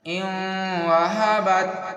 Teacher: یہاں پر نون ساکن ہے اور یہ واو جو ہے یرملون کی ہے، یہاں پر غنہ کرنا ہے